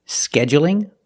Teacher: right it's light because the L is between vowels scheduling so you can say scheduling with a stress on the first syllable scheduling or you can say scheduling and make it longer on